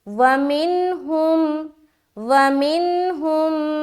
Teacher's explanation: نون ساکین اور اس کے بعد ہا ہے تو اظہار کریں گے، واو کو جلد ادا کرنا ہے، میم کو بھی جلد ادا کریں گے، معروف کا خیال رکھے۔